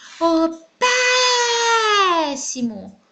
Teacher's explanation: Pé é a sílaba tônica da palavra péssimo.